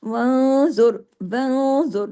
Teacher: नून साकिन के बाद ज़ौ है, हैवी लेटर है, इख्फा हो रहा है, आवाज भी भारी हो रही है। आगे हर्फ भी भारी हो रहे हैं, क्यों, एक तो भारी फैमिली से, और रॉ पीछे वाले पेश के असर की वजह से।